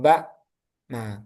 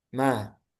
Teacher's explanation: bibir atas sama bawah itu ditutup rapat agak ditekan kalau untuk ba. Baru kalau untuk mim dia merapatnya itu hanya biasa aja enggak ditekan seperti ba